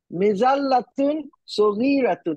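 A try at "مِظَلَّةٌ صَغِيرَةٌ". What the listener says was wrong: আচ্ছা, মাশাআল্লাহ, তারপর একটা বলেন।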